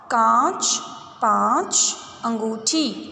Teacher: अनुनासिक का उच्चारण करते समय ध्वनि कहाँ से निकलेगी, नाक से और मुंह से, दोनों से निकलेगी।